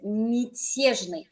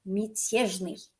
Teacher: If a ya is not stressed, it goes to an e sound.